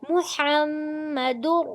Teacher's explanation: اس کی پیش کو چھوٹا پڑھیں گے اور حا کو وسط حلق سے پڑھیں گے، اور حا کی زبر کو میم مشدد کے ساتھ ملائیں گے دباؤ دے کر، اور میم مشدد پر غنہ کریں گے. محمد.